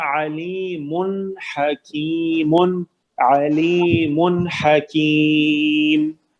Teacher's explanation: اظہار ہوگا علیم حکیم، علیم حکیم، بالکل غنہ نہیں کریں گے